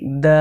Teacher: দাল হরফকে জিহবার আগা উপরের দন্ত তালুর সঙ্গে লাগিয়ে উচ্চারণ করতে হয়